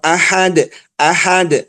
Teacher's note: Kenapa dibacanya Ahad dalnya ada mantul itu kenapa Dal punya sifat namanya Qalqalah